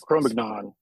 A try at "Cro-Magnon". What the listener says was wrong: No. Because it's French, the G falls off. It's just Cro-Magnon. Cro-Magnon.